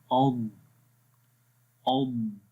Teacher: آواز کے اندر استطالت ہوتی ہے یعنی کہ تھوڑی سی آواز لمبی ہو جائے گی اض. ٹھیک ہے حمزہ ضاد زبر اض اض.